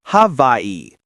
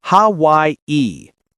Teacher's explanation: Native Hawaiians might say havi with a v sound, but the standard American version uses w.